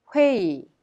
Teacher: The last syllable 의 is pronounced e because it is easier to be pronounced e instead of 의.